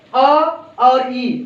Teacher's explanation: अ का उच्चारण स्थान कंठ है, ई का उच्चारण स्थान तालव्य है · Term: विजाति स्वर